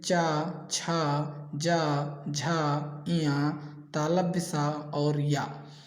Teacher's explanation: जिन व्यंजनों के उच्चारण में जिह्वा का अग्रभाग कठोर ताल को स्पर्श करता है उन्हें तालव्य व्यंजन कहते हैं, जैसे चा, छा, जा, झा, इया, तालव्य सा और या।